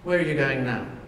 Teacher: Okay, that was a fall at the end of that. You don't need the rise to show the question. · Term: falling intonation